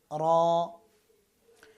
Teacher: র একবার কম্পন হবে